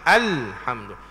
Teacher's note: Jadi ahamdu salah, kena ada lam tu. Maka wajib diizharkan, yakni nyata sebutannya. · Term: alif lam qamariyah